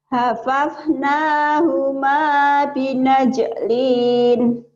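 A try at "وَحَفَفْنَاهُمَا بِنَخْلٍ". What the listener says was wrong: Bukan. Bukan minajlin. Ibu lupa titik nih. Setahun yang ngaji jadi lupa titik. Binakhlin ya, Bu, ya, bukan binajlin, Bu, ya.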